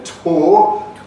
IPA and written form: toː (toe)